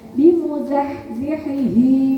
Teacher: Ha-nya benar-benar bersih, kemudian ha-nya dalam.